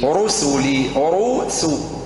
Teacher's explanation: فخم الراء ورقق السين